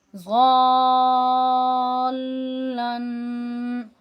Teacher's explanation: آپ کی زبان کی جو نوک ہے وہ دانتوں کے اوپر والے حصے کے اندر کی طرف جو ہے وہاں پہ لگنی چاہیے۔ یہ جو مد آ رہی ہے یہ 3 کھڑی زبر جو ہوتی ہیں، ان حرکات جو ہوتی ہیں کھڑی زبر والی، ان کے برابر کھینچی جائے گی۔